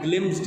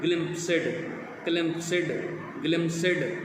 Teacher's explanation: ये एक syllable sound निकलेगा सारा क्लस्टर जो है आपका कॉन्सोनेंट्स का। लाइक ग्लिम्स्ड है, तो कुछ लोग इसको एशियन स्पीकर्स कहते हैं ग्लिम्प्सिड, क्लिम्प्सिड, ग्लिम्सिड।